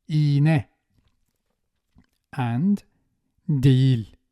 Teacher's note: it's either silent or pronounced ye with the front vowels that precede it